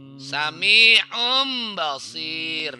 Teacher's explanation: tanwin dan nun sukunnya itu bunyinya nanti mim